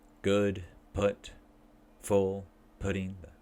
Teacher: This is back, high, lax, rounded. So we make circle their lips, raise tongue slightly and pull it backwards, relax tongue, breathe out, pronounce.